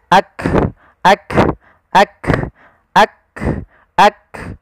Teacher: Sehingga ketika melafalkan huruf kaf, yang perlu kita bunyikan dulu yang syiddahnya, yaitu kita tahan suaranya, baru kita alirkan nafasnya.